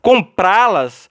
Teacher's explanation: note que a sílaba tônica está na última. Pra, oxítona.